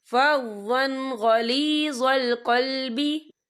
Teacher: وَلَوْ كُنْتَ فَظًّا غَلِيظَ الْقَلْبِ، یا دیکھیں فَظًّا، وا کے پر تنوین ہے، تنوین کے بعد جو ہے غین آ رہا ہے، اور غین جو ہے حروف ہلکی کا ورڈ ہے، تو ہم یہاں اظہار کریں گے، اور ہم اسے بنا غنے کے پڑھیں گے